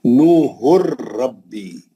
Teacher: جو 2 پیش کی تنوین ہے، اس کے نون کو بالکل حذف کر دیں گے، چھوڑ دیں گے، نکال دیں گے. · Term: ادغام بلا غنہ